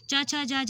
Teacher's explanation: च, छ, ज, झ हमारे तालु को स्पर्श करके निकलती है